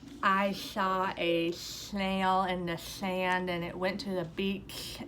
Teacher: this lateral lisp is when the sound is coming out the sides laterally opposed to coming out the front. And it affects the S sound, but it also affects a lot of other sounds too if this is a typical pattern for a student.